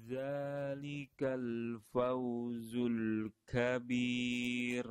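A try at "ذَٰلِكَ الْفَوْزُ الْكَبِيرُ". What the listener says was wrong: Tipiskan lamnya, jangan zul. Zul.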